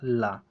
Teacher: जीभ शवास वायु के मार्ग में खड़ी होती है और शवास वायु उसके बगल से प्रवाहित होती है उसे पार्श्विक व्यंजन कहते हैं जैसे आपका हो जाएगा ला इसकी